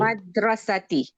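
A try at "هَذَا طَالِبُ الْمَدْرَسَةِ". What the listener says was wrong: Nah, begitu. Hadza talibul madrasati. Mantap. Bagus. Selamat.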